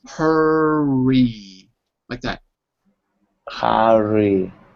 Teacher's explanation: When you say the R, it's with your lips, not with your tongue.